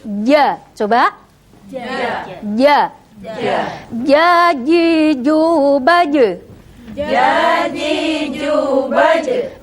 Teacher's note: tempatnya adalah di syajariyah atau tengah lidah kita menempel pada langit-langit, ya. Jadi bukan ja seperti orang Jawa Timur, bukan, tetapi kita bilangnya adalah ja.